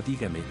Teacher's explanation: vocal que lleva el acento por ejemplo en la palabra dígame la sílaba tónica es la primera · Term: palabras sobreesdrújulas